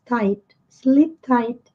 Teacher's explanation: Ponta da língua tocando os dentes superiores, né? A parte de trás dos dentes superiores.